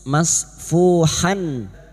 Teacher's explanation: terus masfuhan fathatain atau fathatan yang bertemu Hamzah Idhar halq maka bunyi ha yang berharakat fathatain ini dibaca jelas tanpa mendengung